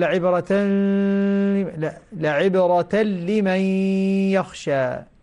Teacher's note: أصير أقول لعبرة لمن يخشى، هكذا إدغام بغير غنة